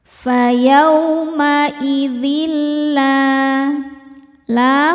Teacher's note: Selanjutnya ada hukum idgham bila gunnah karena ada tanwin kasrah menghadapi huruf lam. Cara bacanya tanwin dileburkan ke lam, tidak disertai dengung, jadi cukup ditekan saja.